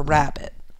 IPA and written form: ræbIt (rabbit)